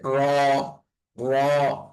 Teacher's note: রটা একটু মোটা হবে, একটু মোটা করে উচ্চারণ হবে। তারপরের হরফটা হচ্ছে জা।